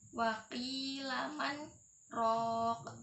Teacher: Waqilaman rok. Di situ terdapat saktah, yaitu menahan nafas.